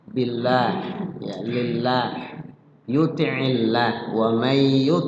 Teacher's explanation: ya dibaca tipis maaf maaf karena sebelumnya huruf berbaris kas kasrah lafzul Allah itu dibaca tipis